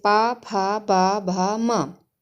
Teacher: ये पांचों ही जो वर्ण हैं वो हमारे होठों से बोले जाते हैं